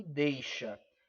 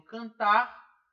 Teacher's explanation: quando ele tem R, a última sílaba é a mais forte. Quando não tem R, a última sílaba não é a mais forte.